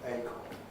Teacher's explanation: it's pronounced with stress on a but we don't weaken it most of us can we don't say aiken maybe one or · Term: unstressed strong vowels